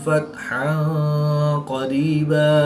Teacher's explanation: دو زبر کی تنوین کو وقف کی حالت میں الف مدہ سے تبدیل کر کے پڑھیں گے